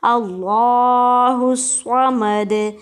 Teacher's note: अच्छा, हा को हम स्वाद के साथ मिला रहे हैं और इस स्वाद को हम सीटी की आवाज़ से अदा करते हैं और थोड़ा सा मोटा अदा करते हैं